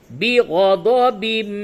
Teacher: یہ تنوین کے بعد حروف یرملون میں سے میم آیا ہے، ادغام مع الغنہ ہوگا